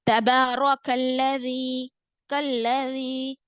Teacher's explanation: لام پہ شدہ ہے، ڈبل پڑھیں گے. لیکن یہاں پر جب ہم ڈبل پڑھیں گے تو یہ لفظ اللہ کا لام نہیں ہے، اس کو موٹا نہیں پڑھیں گے.